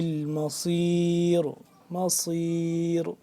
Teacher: سین اور صاد میں فرق کریں گے، یہ صاد تھوڑا موٹا پڑا جاتا ہے اور سین باریک، دونوں کی آواز ہے سختی سے، سی ڈی کی سی آواز ہوتی ہے دونوں کی، لیکن اس کی آواز تھوڑی موٹی ہوتی ہے صاد کی، اور سین کی سیدھی ہوتی ہے باریک.